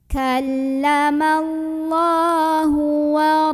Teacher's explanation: La ada mad asli atau mad tabi'i karena ada baris fathah berdiri di atas huruf lam. Maka dibacanya panjang 2 harokat.